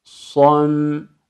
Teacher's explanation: Şimdi aynı harfleri sırasını değiştirerek telaffuz ediyorum. Baş tarafa kalın olan sad harfini aldık. Sonra şeddeli olarak ince olan mim harfine bağlıyorum.